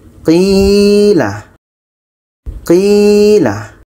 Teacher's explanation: Qi ini panjang karena ada ya mati sebelumnya baris bawah. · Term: mad asli ya